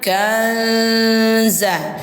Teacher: suara nun sukun ini kita samarkan ke huruf zai. Jadi bunyinya kanza. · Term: ikhfa hakiki